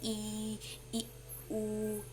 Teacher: सवृत्त, मतलब पूरा मुंह क्लोज होके बोलता है